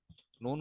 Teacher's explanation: जबान का किनारा और अनिया से सनाया तक के दांतों की जड़ों से अदा होता है